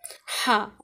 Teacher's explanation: تو یہاں سے نکلتا ہے ہا، عین اور ہا دونوں وسط حلق سے نکلتے ہیں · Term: حروف حلقی